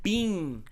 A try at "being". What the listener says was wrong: No, 2 syllables.